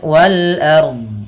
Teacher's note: Di sini ada alif lam qamariyah, yaitu alif lam yang ditulis dan dibaca dengan jelas suara lamnya